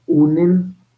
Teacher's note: doble nasalización porque estoy en medio nasales